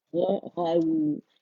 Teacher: غا کے لیے دیکھیں اس پہ فتح ہے تو آواز ایک کاؤنٹ کے لیے اوپر جائے گی، پھر نرمی سے ہم واو ساکنہ کے ساتھ اسے ملائیں گے. تو جب یہ نرمی سے ملے گا تو آواز کا جو فلو ہے نا اس کو ضرور فیل کریں، اور لپس کو مکمل رول کرنا ہے، فرنٹ میں فارورڈ میں آگے آپ پش کریں گے اسے، ٹھیک ہے، آؤٹ ورڈ، تاکہ دانتوں سے جدا ہو جائے.